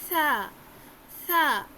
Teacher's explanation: زبان کی نوک انہی سامنے والے دانتوں کے کنارے پر لگا کے سرے پر پڑھیں گے سا. سا نہیں پڑھنا.